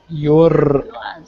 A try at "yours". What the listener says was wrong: Don't roll your R's. We don't roll our R's in English. Yours.